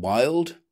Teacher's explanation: It is an approximant, which means there is no contact between the lips – they are very close to each other, but not touching. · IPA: /w/